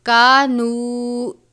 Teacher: نون کی آواز کو آپ نے ناک میں نہیں لے کر جانا بلکہ کانو اتنا پڑھنا ہے.